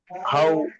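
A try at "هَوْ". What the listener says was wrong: হামজা টান হয়ে যাচ্ছে, হামজা। আও, আও, আও, আও, হাও নয়, আও,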